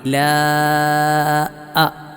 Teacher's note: മദ് അക്ഷരത്തിനു ശേഷം ഹംസ വന്നു ഇവിടെയും നന്നായി മദ് ചെയ്യണം